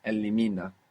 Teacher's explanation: we still have the accent on the penultimate syllable